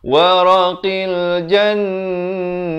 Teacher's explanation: kalau waqaf ta marbutah ini, ta simpul ini ditukarkan kepada bunyi ha. Tetapi kena dengungkan dahulu sebelumnya.